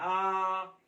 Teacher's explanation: आ जब बोलते हैं तो आपका जो मुंह है पूरी तरह से खुल जाता है